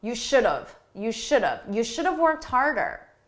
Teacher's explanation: we take have, which is the grammatically correct choice, but we reduce it. We say it quickly and it sounds like of.